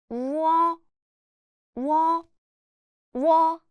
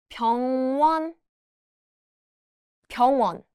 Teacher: It's a combination of 우 and 어. Pronounce 우 and 어 quickly together, which becomes 우어.